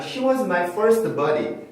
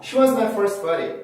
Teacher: 어떤 단어의 끝이 ST로 끝이 나고 그 다음 단어의 시작이 자음으로 시작이 되면 T 발음을 없애고 S만 살리고 발음하는 경우